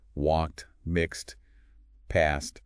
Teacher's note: they all sound like a T at the end, not D or ed.